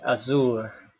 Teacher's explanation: And then we have post alveolar, like sh in ship, zoo in azure.